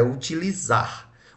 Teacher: Onde é que está a sílaba mais forte? Na última. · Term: oxítona